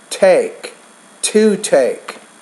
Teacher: you want to pronounce that with a little bit more air